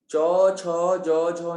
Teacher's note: च, छ, ज, झ है, इसमें सिर्फ तालव्य, ये तालव्य है, इसमें तालु से आवाज निकल रही है और कहीं से आवाज नहीं निकल रही।